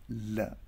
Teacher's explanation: Now lateral, also called lateral approximant. So air flows over sides of the tongue